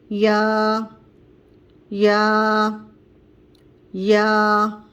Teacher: یا کی ادائیگی سیم زبان کے درمیانے حصے سے ہوگی، جس طرح شین اور جیم کی ادائیگی ہوئی تھی. اوپر کا تالو درمیانہ حصہ اور زبان کا درمیانے حصے کے دونوں کے ملانے سے یا کی ادائیگی ہوگی